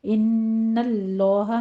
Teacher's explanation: नून मुशद्दद है, गुन्ने वाजिबा करते हुए आगे लफ्ज़ जलाला को पुर पढ़ना है।